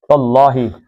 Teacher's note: زبر کی وجہ سے اللہ کا لام موٹا